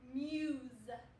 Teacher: this s kind of makes more of a z z sound